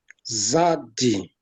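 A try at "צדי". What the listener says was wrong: Make it more with a T. Tzadi.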